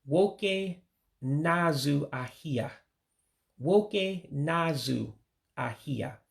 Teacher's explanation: those 2 words in the middle, na and azu, you put it together because you have to do that vowel dropping again. When you have 2 vowels together, you have 2 A's in English, one of them goes away.